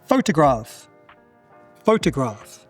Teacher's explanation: The schwa is in that second syllable.